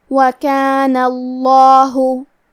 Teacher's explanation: کلمت کانا کے آخری میں کیونکہ نون پہ زبر ہے، لہذا ہمیں لفظ الجلالہ مطلب کلمت اللہ کے لام کو تفخیم سے مطلب بھاری آواز میں پڑھنا ہے۔